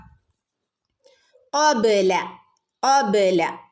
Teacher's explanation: നാവിൻ്റെ മുരട്ട് നിന്ന് വരുന്ന അക്ഷരമാണ് ഖ.